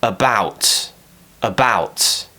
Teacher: more power is going into the bout and the up is just there to help you carry the word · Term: weak syllable